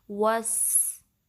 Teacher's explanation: ठीक है, फिर वा के लिए होंठों को गोल करना है और वाव की फतहा को सीन से मिलाना है और सीन की सीटी वाज़े करनी है